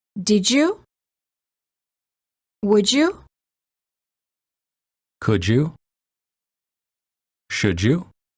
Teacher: D plus Y is usually pronounced as j, as in joke. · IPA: /dʒ/